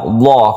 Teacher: maka dibaca tebal atau tafkhim karena sebelumnya ada fathah · lam jalalah itu ada tarqiq ada tafkhim dalam hal ini karena sebelumnya ada fathah maka dibaca tebal Allah gitu ya borobullah maka dibaca tebal atau tafkhim karena sebelumnya